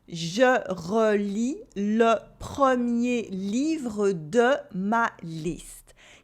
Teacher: Here I am only using open E sounds.